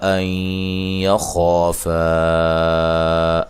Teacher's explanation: نون ساکن کا ادغام مع الغنہ ہے